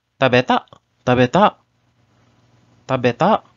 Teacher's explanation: We do not say tabeta ka, and instead we use the rising intonation to ask a question, just like in English.